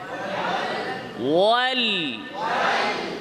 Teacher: আওয়াজটা সামনাসামনি সোজাসুজি না যেয়ে জিহ্বার আগার দুই সাইড দিয়ে যাবে। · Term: ইনহিরাফ